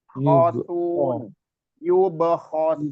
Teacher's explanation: Kho itu kasar di sini ya, kasar dan getar di tenggorokan paling atas. Khosun, yubkhosun.